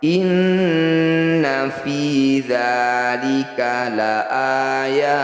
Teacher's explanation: Ketemu qaf dan lam lagi, lebih baik dihentikan. Inna, nun bertasydid disebut bacaan gunnah musyaddadah. Bunyi nun dengungkan 2 harokat.